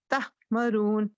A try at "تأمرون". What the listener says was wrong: ہا کی آواز نہ آئے, بس تأمرون مرون تأمرون